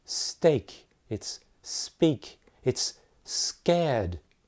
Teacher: So when we say speak, all of a sudden there is no aspiration with p.